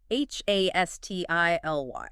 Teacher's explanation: Hastily, three syllables, stress on the first